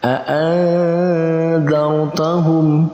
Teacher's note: Dia masuk dalam kategori ikhfa maka kita bacanya dengan mendengungkan, dengan menggabungkan dan kita tambahkan huruf eng di tengahnya.